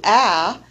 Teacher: the tongue is much lower lower inside the oral cavity it's just basically resting at the bottom of the mouth so is a low vowel with the lower jaw and the